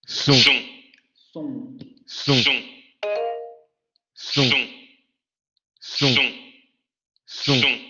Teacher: Nasal posterior semiabierta labializada.